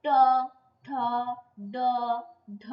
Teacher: ट तालु के ऊपर लग रहा है, ऊपर वाला पर्सन में, उसको मूर्धा कहते हैं। देखो ट ठ ड ढ मूर्धन्य, तालु के ऊपर लग रहा है, इसीलिए इसको मूर्धन्य वर्ण कहते हैं।